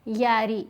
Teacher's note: را کے نیچے زیر ہے, باریک پڑھیں گے.